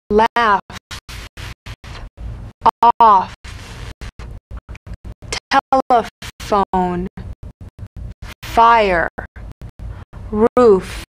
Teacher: The F is a cognate to the V, the unvoiced fricative labiodental. Upper teeth to lower lip, just like the V.